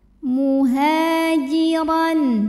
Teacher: Huruf ra dibunyikan secara tafkhim karena ra berbaris tanwin fathah, maka kita baca dengan tebal. Ra maka lidah angkat.